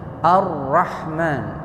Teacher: Kemudian ar itu namanya idgam kamil, enggak boleh ditahan. Jangan arrah ar langsung ar gitu saja.